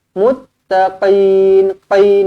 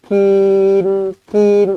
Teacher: qof di sini pastikan kita tekankanlah jangan nipis sangat kalau nipis sangat dia Jadi huruf Kaf nanti